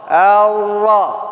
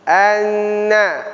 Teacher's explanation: perbedaan nanti antara nun dengan ra. Dia sama ujung lidah mengenai gusi gigi sebelah atas, tetapi ra ini disertai gerakan punggung lidah. Ar-ra. Beda dengan nun.